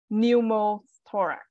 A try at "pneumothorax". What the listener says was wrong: Perfect.